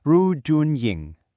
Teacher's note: We have the fourth tone Ru, first tone Jun, and second tone Ying.